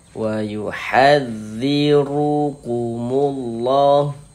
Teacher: Huruf ra memiliki harakat fathah memiliki harakat dhammah. Maka huruf ra itu dibaca tebal, dibaca tapkhim. Nah, sehingga kita tebalkan huruf rnya. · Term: dibaca tafkhim